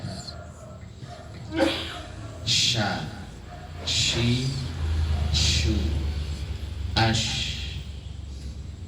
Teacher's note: Sya letaknya di tengah lidah bertemu dengan langit-langit atas. Dan dia punya sifat tafasyi.